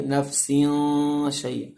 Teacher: تنوین کے بعد شین آئے تو اخفا ہوتا ہے، تنوین کی آواز ناک میں چھپائیں گے